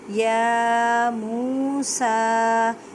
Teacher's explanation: یا کو ایک الف کی مقدار میں کھینچ کر پڑھیں۔ واو ساکن سے پہلے پیش ہے تو واو مدہ کا قاعدہ کریں، مینس کہ ایک الف کی مقدار میں کھینچ کر پڑھیں۔